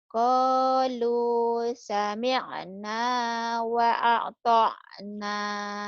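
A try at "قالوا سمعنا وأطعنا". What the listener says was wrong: Wa ata' jangan wa a'ta, wa ata'na. Qalu sami'na wa ata'na.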